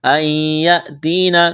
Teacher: نون ساکن کے بعد یا ہے، یہاں پر ادغام کریں گے، یعنی اس نون کو نہیں پڑھیں گے، غنہ کریں گے